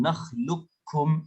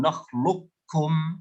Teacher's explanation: في الناقص نثبت صفة الاستعلاء في القاف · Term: الإدغام الناقص